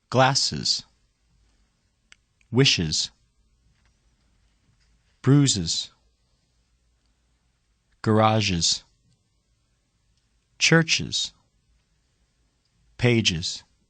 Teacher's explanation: After the sounds s, sh, z, zh, ch, and j, add the unstressed vowel before the grammatical s. The combined sound, uz, adds one syllable to the word.